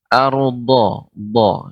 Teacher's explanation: do ini adalah kedua tepi lidah mengenai gigi geram atas